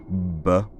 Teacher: voiced which means that the voice box is buzzing throughout the articulation